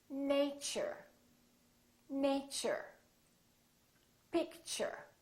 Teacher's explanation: So the T and U create a new sound, and it sounds kind of like ch.